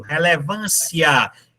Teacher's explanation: No caso aí é crescente, o som vai subindo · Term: ditongo crescente